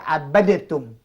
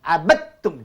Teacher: Kalau dal ni mati jumpa dengan ta, masukkan dal ni ke dalam ta.